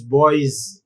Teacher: We do not say, though the word, the morpheme is yes, we do not pronounce it as s, but we pronounce it as z